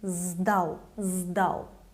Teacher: The voiced D makes letter S sound as its voiced counterpart Z